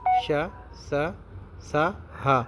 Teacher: ऊष्म या संघर्षी व्यंजन ये वे व्यंजन हैं जिनके उच्चारण में विशेष रूप से श्वास का घर्षण होता है। वस्तुतः जीभ तथा होठों के निकट आने के कारण इनके उच्चारण में वायु रगड़ खाती हुई बाहर निकलती है व इसी से संघर्ष घर्षण होता है।